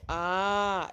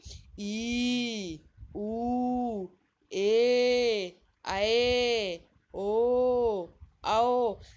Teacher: जिन वर्णों के उच्चारण में ह्रस्व वर्ण से दुगना समय लगे वे दीर्घ वर्ण कहलाते हैं